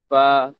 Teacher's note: kita menekan bibir bawah ke gigi kacip atas. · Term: huruf fa